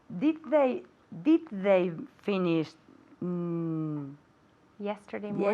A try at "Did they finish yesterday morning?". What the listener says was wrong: Are you saying did they finished? No T, right? Okay, no T there, okay? Because we have the did, right?